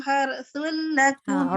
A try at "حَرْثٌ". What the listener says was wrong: Ra har jangan har. Har tebalkan.